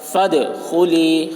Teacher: دال حروف قلقلہ میں سے ہے اور اس پر جزم ہے، اس لیے دال میں قلقلہ ہوگا